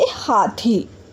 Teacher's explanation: ह को कंठ की सहायता से बोला जाता है, यानी कि गले की सहायता से बोला जाता है